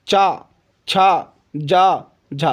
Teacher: जब हम चाछा जा बोलते हैं तो हमारी जीभ तालु पर जाकर लगती है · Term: चा वर्ग